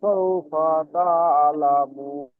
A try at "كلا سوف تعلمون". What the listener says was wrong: সাউফাটা টান দেবেন না, ঠিক আছে?